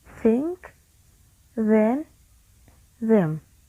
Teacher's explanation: a constriction between the tip of the tongue and the upper teeth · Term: dental sounds